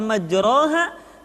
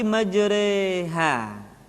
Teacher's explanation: huruf ro yang berharakat fathah dibaca miring ke kasrah sehingga bunyinya bukan majroha tetapi majreha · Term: imalah